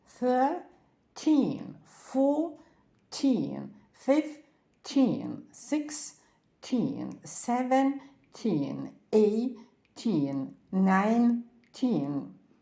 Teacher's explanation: від 13 до 19 додаємо н і наголоси ставляться однаково на обидві частинки слова